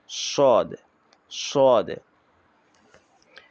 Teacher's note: সদের সময় শেষে শব্দটা হবে কিন্তু এটা মোটা আওয়াজে